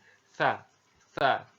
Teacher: ujung lidah disentuhkan dengan dinding dua gigi seri bagian atas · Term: huruf sa